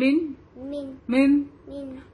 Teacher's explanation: اگر ہم من بولتے ہیں, سے من, تو ٹنگ کہاں ٹچ ہو رہی ہے؟ فرنٹ اپر گمس میں ٹچ ہو رہی ہے